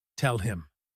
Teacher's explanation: They drop the H. It sounds like tell him. The word him sounds just like the end of the word swim. Tell him. If you are listening for the word him with a strong H sound, you might miss it completely.